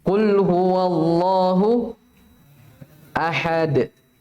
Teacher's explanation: Jadi keliru kalau baca ahad, ahad. Karena kalau dibaca begitu seakan-akan tasydid. Ya, jadi langsung bersambung dia. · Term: sukun dikala berhenti